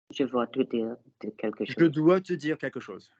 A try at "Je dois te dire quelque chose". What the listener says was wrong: Good. Lovely.